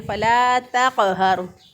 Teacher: اسی طرح بعض لوگ تا جو ہے اس کو تو سے بدل دیتے ہیں، اس کو پڑھ دیتے ہیں تقہر، تقہر. حالانکہ تا جو ہے اس کو باریک پڑھیں گے اور قاف موٹا پڑھیں گے